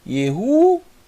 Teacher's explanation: normalmente se lê Y mas bem rápido tá que parece I mesmo